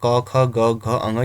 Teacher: क ख ग घ अंग ये आपके कंठ से उच्चारित होते हैं